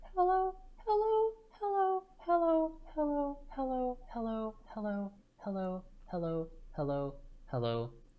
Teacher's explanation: Starting light and high, going heavier and lower.